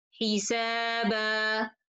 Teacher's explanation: If you notice here, if I have this ألف is written from the beginning, or if it's not written from the beginning, in both cases I stop with ألف. This alif, we don't write it, but we pronounce it when I stop.